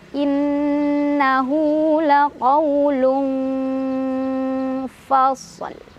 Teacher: Shad dan lam kan disukunkan ya. Shad dibaca sebagaimana mestinya, ada desisan, ada angin keluar, dan lam juga tetap harus dibaca. · Sehingga ini jangan lupa, ketika membunyikan tanwin, maka kita sudah siap-siap ke fa. Fa dari mana? Bibir bawah bagian dalam ketemu gigi atas. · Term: ikhfa ausat